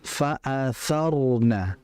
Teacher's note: Kalau fa'atharna, sisi makhrajnya benar, tapi sifatnya tidak benar. Karena ro itu dalam kondisi thar itu dia tebal.